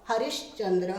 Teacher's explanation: तालव्य श में बदल रहे हैं हम, इसको तालव्य बोलते हैं।